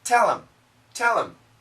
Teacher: When we say this quickly, there's no H.